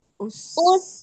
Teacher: sin sukunnya itu dia sudah kembali ke makhraj sin, enggak boleh monyong